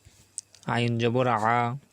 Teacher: আইন সবসময় আমরা চাপিয়ে বলবো, যেহেতু কণ্ঠনালীর মাঝখান থেকে আইন উচ্চারিত হয়।